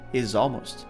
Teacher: The Z sound from is links to almost.